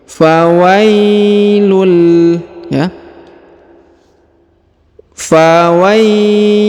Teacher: huruf wa diayun sekali karena di depannya terdapat Ya Sukun